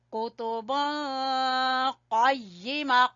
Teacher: قاف کو زبان کی جڑ سے